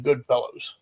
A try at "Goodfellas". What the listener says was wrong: Goodfellas. Sound like you said fellows.